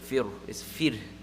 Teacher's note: So fir, that ra, is going to be pronounced empty mouth. Right? There's sukoon and the letter before has a kasra.